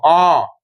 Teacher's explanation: যাই হোক, এখানে বোঝার বিষয় অ আর আ এর উচ্চারণ স্থান এক। অ উচ্চারণ করতে যদি 1 সেকেন্ড সময় লাগে, সেই অটা যখন আমি 2 সেকেন্ড উচ্চারণ করব তখন অটোমেটিক সেটা আ হয়ে যাবে